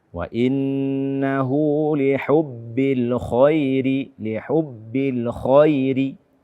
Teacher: Kesalahan ketiga pada ayat ke-8 ini, kaum muslimin dan muslimat, pemirsa Asil TV yang dimuliakan oleh Allah Azza wa Jalla, adalah menipiskan kha pada kata al-khair. Di sini ada kha, dia adalah salah satu daripada huruf tebal dan dia berbaris fathah. Ketebalannya sempurna.